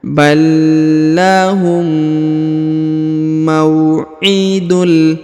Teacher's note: Huruf ma diayun sekali karena terdapat waw sukun di depannya.